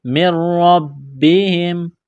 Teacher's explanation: میم مشدد ہے، غنہ کریں گے، آواز ناک میں چھپائیں گے، نون ساکن کے بعد را ہے تو اس نون کو نہیں پڑھیں گے، نون کا را میں ادغام کریں گے بغیر غنے کے